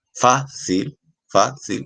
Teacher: tiene que la fuerza de voz está en la penúltima sílaba, es decir, esa sería su sílaba tónica como tal